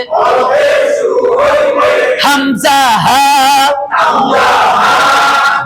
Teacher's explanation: এক নাম্বার মাখরজ হলকের শুরু হইতে হামজা হা